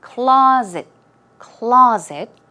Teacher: stress goes on the first syllable and it's more of a z z z sound